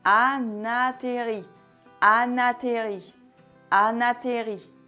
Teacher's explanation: Du son N au A pour qu'ils deviennent comme un mot.